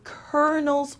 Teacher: the l sound is not pronounced at all